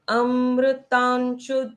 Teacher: ता के ऊपर ये जो अनुस्वार है इसको आधे न के जैसे उच्चारित होता है